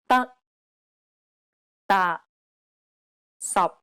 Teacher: p t and K are unreleased in Cantonese this means that you must not release a burst of air when pronouncing this sound it's as though you're cutting the sound off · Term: final stops